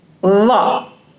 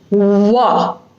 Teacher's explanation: It is a labiodental sound, which means that upper teeth will touch the lower lip.